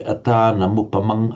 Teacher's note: where you get the final M followed by a vowel, you'd never have anuswara. It would always be full consonantal M.